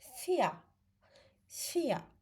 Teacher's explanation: İ-E birləşməsi uzun İ səsini verir.